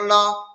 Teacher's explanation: زبر کو جلدی پڑھیں، تھوڑا بھی نہ کھینچیں۔